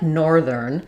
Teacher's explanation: So nor is going to be longer, then is going to be shorter. Part of why this word is so difficult is that we have to do the th and r close close together. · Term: stressed syllable